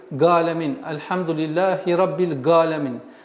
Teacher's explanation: одна из самых распространенных ошибок при произношении айна это г. Галамин.